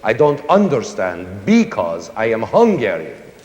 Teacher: Almost all the words in it are accented on the first syllable. · That's how you can always tell a Hungarian speaking English, because he always says "I don't UNderstand BEcause I am HUngarian." And that same accent naturally pops up in the music: All the stresses BElong at the BEginning.